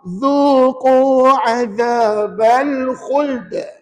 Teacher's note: hukumnya qalqalah kubra mesti kedengaran lantunannya dengan kadar yang kuat. Kuat tu bukan suruh menjerit.